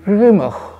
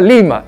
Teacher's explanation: la R en quechua no es una R vibrante, no vibra, es suavecita. Y cuando los españoles escuchaban, entonces lo trastocaban con el sonido L.